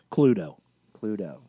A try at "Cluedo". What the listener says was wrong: You don't pronounce the E. It's a silent E.